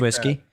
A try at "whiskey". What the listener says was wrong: There's an H, okay? You know, pronounce the fucking H.